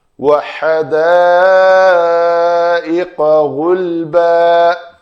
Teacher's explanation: قا کے لیے محنت کر کے ان مسل کو ٹینشن دے کے اس لوتھڑے کو بالمقابل تالو کے ساتھ لگانا ہے تو وہ قاف ادا ہوگا، نہیں تو کاف ہو جائے گا۔